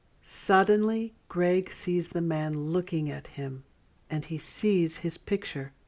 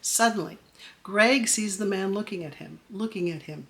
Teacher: I pause after the word suddenly, because there's a comma there in the sentence. Suddenly, little pause.